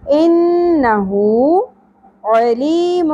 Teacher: ان، نون مشدد پہ غنہ ہوگا، ہو الٹا پیش ہے، ایک الف کے برابر کھینچیں گے۔ انہو علیم، عین وسط حلق سے، لی یا ساکن حرف مدہ ہے، ایک الف کے برابر کھینچیں گے۔